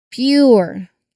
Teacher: The slide points out that the U after P can represent the J sound. So it's the P sound followed quickly by the Y sound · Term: PJ